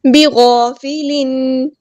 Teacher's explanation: الف مد آیا ہے تو ہم ایک الف کے برابر لمبا کریں گے ، غین ہمارا ہیوی لیٹر پورا ادا کریں گے،